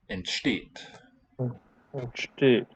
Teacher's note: The only other point to note is that the ENT prefix on the verb is never stressed